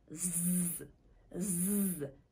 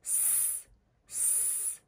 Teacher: Va biz ko'p hollarda z z jarangli tovushini s s jarangsiz tovush bilan adashtirardik